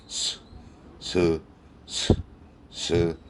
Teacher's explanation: 무성음이기 때문에 받침을 넣어서는 안 되고 스 하고 발음하면 바로 S 발음입니다. 입천장에 혀가 아무것도 안 닿죠.